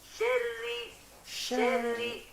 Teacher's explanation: ro tasydid, jangan sampai dibacanya itu ditebalkan, jangan dibaca syarri, syarri, tetapi dibaca tipis, syarri, syarri.